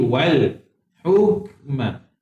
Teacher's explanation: Angin sikit tuan-puan, jangan baca hukma. Dia ada angin sikit. Wal hukma wan nubuwah.